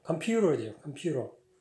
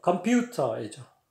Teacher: 퓨하고 올라가는 거는 미국이나 영국이나 똑같아요